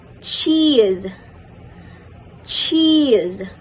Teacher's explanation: You place your tongue just behind the alveolar ridge, stop the airflow, and then release it with friction. The manner of articulation is post-alveolar affricate.